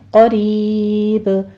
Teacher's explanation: یہاں پر ہم وقف کریں گے تو با ساکن ہو رہی ہے، قریب، با کے اوپر قلقلہ کر لیں گے اور مد عارض وقفی کریں گے، 6 کاؤنٹ کر لینا ہے